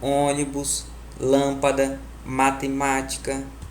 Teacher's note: Lembrando, a gente começa a contar as sílabas de trás para frente. Proparoxítona, quando a sílaba tônica é a antepenúltima, ou seja, a terceira última.